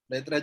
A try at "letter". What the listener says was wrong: Letter, not letra.